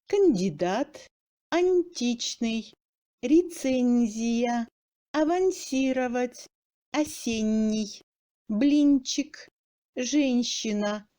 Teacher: Le phonème dur N subit une assimilation de mouillure devant les consonnes molles D, T, Z, S, N, Ch, Ch et se prononce comme mou